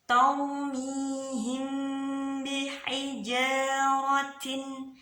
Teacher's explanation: Jadi kalau sudah bertemu dengan ba namanya ikhfa syafawi. Karena huruf ba huruf yang keluar dari bibir. Ikhfa karena dibacanya dengung.